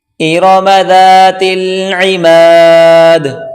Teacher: عین کو گلے سے نکالیں زور لگا کر